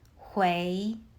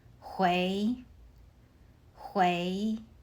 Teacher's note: Hui uses the second tone. Your voice rises.